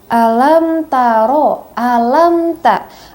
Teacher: mim mati bertemu dengan huruf hijaiyah atau ta, ya maka dibaca tidak dengung ya atau dijelaskan saja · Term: izhar syafawi